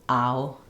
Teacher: it's the ah and the oo, ow sound. Both of these are sliding sounds. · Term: OW diphthong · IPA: /aʊ/